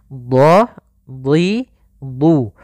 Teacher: dhad huruf isti'la dan huruf idbaq yang tebal dan juga pangkal lidah terangkat. Di sini ada bacaan mad tabi'i yaitu dhammah bertemu dengan huruf waw.